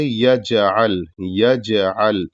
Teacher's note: یجعل میں جو جیم ہے وہ ساکن ہے لیکن یہاں قلقلہ ہوگا